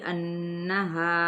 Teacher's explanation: یہاں پہ غنہ کرنا ہے اور ساتھ ہی 4 حرکت کھینچیں گے ، مد منفصل کا بھی قاعدہ ہے، اذا، یہاں پہ الف